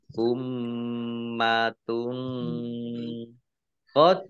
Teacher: Tilka ummatun mim tasdid ya, dibaca huna atau mendengung, ditahan kurang lebih 2 harokat. Domah tanwin bertemu dengan huruf qaf, bacaan ikhfa, dibaca samar-samar